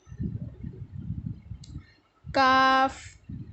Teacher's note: کی جڑ کوے کے قریب جب نرم تالو سے لگے، کاف، زبان کی جڑ جب سخت تالو سے لگتی ہے تو کاف ادا ہوتا ہے